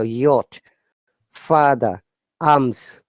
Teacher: Remember, R is silent here.